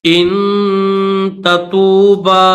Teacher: با کو کھینچیں گے، با کے اوپر چھوٹی مد ہے تو اس کو تھوڑا سا کھینچا جائے گا 3 الف کی لمٹ میں